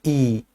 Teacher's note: कि सर ध्वनि तो अंदर से ही आती है लेकिन वो जीव के अवरोध से ध्वनि परिवर्तित होती है। तो जीव का आगे वाला हिस्सा थोड़ा सा और आगे खिसकने का प्रयास करता है। तो इसलिए इसको अग्र स्वर बोल देते हैं। · छोटी इ जीभ के आगे वाले हिस्से उच्चारित होती है